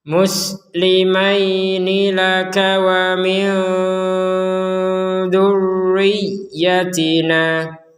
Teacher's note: kita membaca nun sukun ini samar karena kita menggabungkan dengan huruf zal